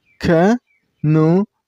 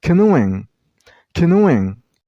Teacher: you should stress on the middle syllable. I mean on nu sound.